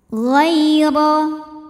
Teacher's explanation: huruf ra dibunyikan secara tafkhim karena berbaris fathah, maka dibacanya tebal.